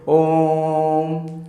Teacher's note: प्लुत स्वर है, जो कि सबसे ज़्यादा समय लेता है कोई भी वर्ड बोलने में